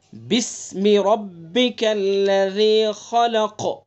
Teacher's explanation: با کو سین میں ملا دیں گے ایک دم، بی اسمی نہیں پڑھیں گے